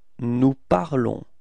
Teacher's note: So keep in mind that final s is not pronounced, okay? So it's only this on, the sound on at the end of this verb, okay?